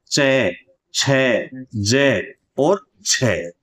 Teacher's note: के साथ-साथ इसमें कोई संदेह नहीं है कि ये स्पर्शी है स्पर्श तो होता है लेकिन स्पर्श के साथ-साथ इनमें संघर्ष भी होता घर्षण भी होता है · यानी चय जब बोलते हैं तो जीभ चिपक जाती है और रगड़ खाती हुई जीभ नीचे उतरती है। तो यहां पे स्पर्श भी होता है और संघर्ष भी होता है, इसलिए इन्हें हम केवल स्पर्शी ना कहकर एक नए वर्गीकरण में शामिल करते हैं और इसे कहा जाता है स्पर्श संघर्षी व्यंजन।